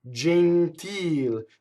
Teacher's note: The real word is gentile. So the accent of the word is on the E vowel, so therefore the E is closed.